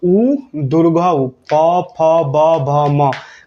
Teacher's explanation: प फ ब भ म का उच्चारण स्थान कोई पूछे तो आप लोगों को क्या बताना है कि ओठ होगा